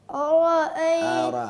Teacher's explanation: حمزہ کو موٹا نہ کریں. دونوں باریک حمزہ کے درمیان را موٹی آ گئی ہے, اس کو موٹا کریں لیکن حمزہ کو باریک رکھیں